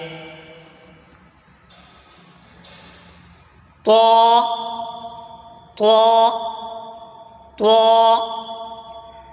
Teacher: زبان کی نوک اور اوپر کے دانتوں کی جڑ سے ادا ہوتا ہے